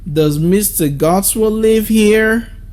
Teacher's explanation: But pay attention to how I ask the sentence. I use the rising tone for it.